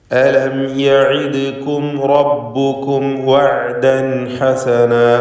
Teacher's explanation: ഇതിൽ യഇദ്കും എന്ന് പറയുമ്പോൾ ദാലിൻ്റെ സുക്കൂൻ ഖൽഖല സൂറ നൽകി ശബ്ദം ഹറക്കത്ത് പോലെ വ്യക്തമാക്കണം. റബ്ബുക്കും റാഇന് തഫ്ഖീം കൊടുക്കണം.